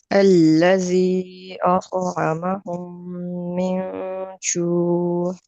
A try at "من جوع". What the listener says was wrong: عین کی آواز کو نکالنے کی کوشش کریں. من جوع.